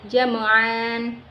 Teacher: Cara membacanya dipanjangkan seperti mad tabi'i dan tidak dibaca seperti tanwin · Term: mad iwan